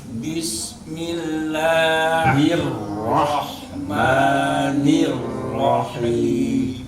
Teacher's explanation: Si ro itu dia punya sifat takkar, punya sifat bergetar dan berulang. Sehingga hir jadi ditakrirkan lagi Pak.